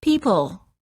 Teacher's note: Common mistake. Don't round your lips when you're saying the L. This will weaken it and make it sound more like a W.